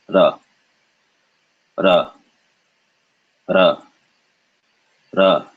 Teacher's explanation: So this is ra, ra, ra, ra, ra. So it's the Spanish single R, not a rolled R